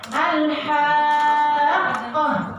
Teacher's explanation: Ada sebagian ulama mengatakan itu adalah qalqalah akbar. Ya kan, qalqalah akbar. Dia lebih pantulannya lebih terasa.